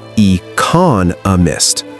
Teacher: E-con-a-mist. There are 4 syllables, but notice where the beat is. It's on the second syllable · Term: syllable stress